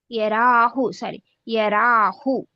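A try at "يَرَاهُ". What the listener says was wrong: లేదు, తప్పు. ఇక్కడ దీర్ఘం తీయాలి. దీర్ఘం ఇక్కడ తీయాలి, మీరు ఇక్కడ తీస్తున్నారు. ఇక్కడ దీర్ఘం- రా మీద దీర్ఘం లేదు కదా, రా ఫతారా.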